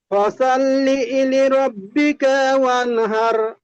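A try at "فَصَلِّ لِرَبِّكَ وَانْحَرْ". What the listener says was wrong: ফাসাল্লি ইলি বলছেন, ফাসাল্লি ইলি হবে না, ফাসল লিলি, লামজের লি, লামজের লি, লিলি। লি ই বলে ওখানে, ফাসাল্লি ই বলে ওখানে ঝাটকা দিচ্ছেন, ঝাটকা হবে না, ফাসল লিলি।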